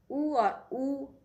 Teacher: उ और ऊ ओष्ठ यानी होठ से बोले जाते हैं